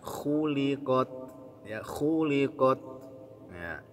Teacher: yang tebal kha-nya, kemudian qafnya, kemudian lam dan ta-nya tipis.